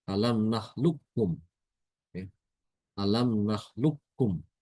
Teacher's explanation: huruf qaf itu diidghamkan ke kaf apabila ya bertemu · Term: mutaqariban